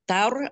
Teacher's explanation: Taur ro tebal dibaca tebal karena sebelumnya ada huruf berbaris fathah, dibaca tafhim dengan lidahnya dinaikkan atas ya, pangkal lidah